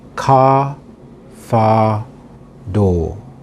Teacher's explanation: If the R is at the end of a word, it is silent, as in car, far, door.